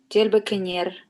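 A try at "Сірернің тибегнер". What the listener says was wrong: Во, тельбекнер правильно, но к озвончается, потому что между двумя глаз тельбек и нер, да? Тельбегнер получится.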